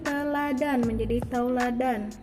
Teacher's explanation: Diftongisasi adalah perubahan bunyi vokal tunggal menjadi dua bunyi vokal atau vokal rangkap secara berurutan. Contohnya seperti teladan menjadi tauladan.